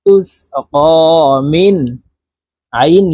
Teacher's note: নুন সাকিনের পরে ইজহারের হরফ আইন আসছে এই কারণে এই নুন সাকিনকে গুন্না ছাড়া স্পষ্ট করিয়া পড়তে হবে